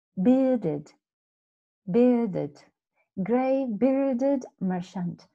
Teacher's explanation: And merchant, remember, again, is that R in equally in bearded. The R is not pronounced, and merchant also is not really, the R doesn't really sound in the phonetics.